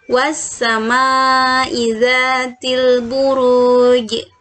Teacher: termasuk kVA kubroan selanjutnya wa sama izzatil Buruj nah ini Hai ada huruf Jim berharokat kasroh tapi dia berada di wakaf di akhir bacaan maka dia harus dimatikan dan harus di pantulkan gym nya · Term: qolqolah kubro